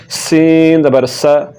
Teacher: تو اب دیکھیں سا کو پڑھتے ہوئے سیٹی کی آواز بالکل نہیں نکلے گی، سا زبر سا۔ تو جب سین کو پڑھیں گے تو سین کو پڑھتے ہوئے سیٹی کی آواز نکلے گی